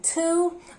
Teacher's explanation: I exaggerated by saying almost like a diphthong O, because Russian speakers tend to pronounce O as U, which is incorrect. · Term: long O